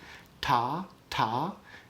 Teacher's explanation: Alveolar is just behind your teeth. If you put your tongue like on the little ridge of gum behind your teeth, ta, ta, that's alveolar